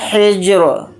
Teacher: جیم کے اوپر جزم ہے تو اس کے اندر قلقلہ کر کے پڑھیں گے